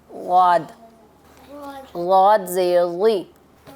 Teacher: زبان کی سائڈ اوپر والی داڑھوں کے ساتھ، داڑھوں کی جڑ کے ساتھ لگے تو وہاں سے غاد